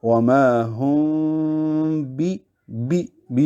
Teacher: میم کے پڑھتے ہوئے اس میں دونوں ہونٹوں کو جوڑنے سے بچایا جائے، جبکہ با میں دونوں ہونٹ جوڑ دیے جائیں۔ وما ہم بی میں ہونٹ ملیں گے۔ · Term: اخفاء شفوی